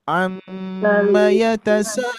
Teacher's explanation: Irama ras yang kedua datar